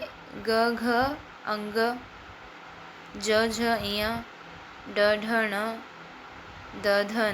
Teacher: जब आप इन वर्णों का उच्चारण करते हैं तब आपके कंठ से कंपन होता है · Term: घोष या सघोष